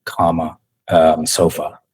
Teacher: la vocal más frecuente del inglés, la vocal más gringa de todas, es lo que se llama schwa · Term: la vocal schwa